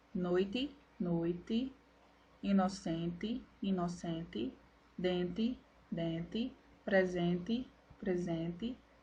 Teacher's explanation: Com o fonema T diante de E reduzido, ocorre também a permanência do fenômeno de despalatalização, uma vez que o fonema E é pronunciado com som de I em contextos fonológicos finais de palavras em posição átona